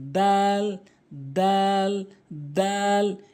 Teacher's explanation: জিহ্বার আগাটা নিয়ে সামনে দুটি দাঁতের গোড়াতে লাগাবেন তার মতো করে, জিহ্বার আগাটা নিয়ে সামনে দুটি দাঁতের গোড়াতে লাগাবেন, দাল, দাল, দাল।